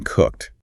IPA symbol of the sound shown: t